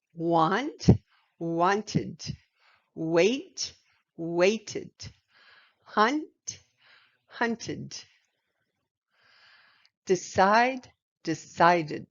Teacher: the id adds a final syllable to the word